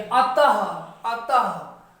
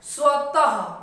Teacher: ये घोष वर्ण, यानी कहने का मतलब इसमें हकार की ध्वनि सुनाई पड़ती है। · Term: विसर्ग